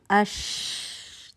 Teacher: ٹھیک ہے, تو آپ پڑھیں اش, تو ہوا بھی محسوس ہو رہی ہے ساتھ ہی, اور ساتھ ہی آواز جو ہے وہ چل بھی رہی ہے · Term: رخاوہ